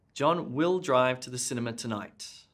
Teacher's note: i put emphasis on the word will